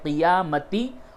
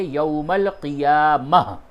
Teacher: تو یوم القیامتی ہے، قیامتی، اور جب وقف کریں گے تو بولیں گے یوم القیامہ